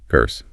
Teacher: No R. The vowel sound might stretch a tiny bit to compensate, but the R itself is gone.